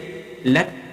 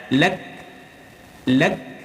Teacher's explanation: Wa ma ahlakna ada hamas lak kaf sukun angin keluar lakna wa ma lak mati k dulu, ada syiddah, mati k dulu baru angin keluar